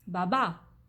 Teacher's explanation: In this case, the word ends with the "a", the stressed "a", baba. So the stress is at the end.